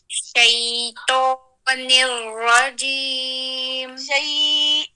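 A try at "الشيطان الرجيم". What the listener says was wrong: دیکھیے بیچ میں مد نہیں ڈالے. شیطان الرجیم.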